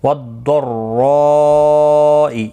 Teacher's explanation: داد مستعلیہ ہے، پر پڑھا جائے گا، تشدید مع تشدید ہے، اس کا خاص خیال رکھنا ہے، را پر پڑھا جائے گا، اور یہاں پر بھی مد متصل ہے، پھر 4 الف کی مقدار کے برابر کھینچ کر پڑھیں گے را کو۔